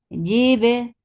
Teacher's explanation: Ba will get sifa of qalqala. It should be very clear.